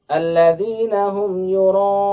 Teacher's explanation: Ini juga kesalahan meskipun tidak sampai merubah arti. Mad wajib muttasil itu lima harokat sehingga dibaca harus panjang.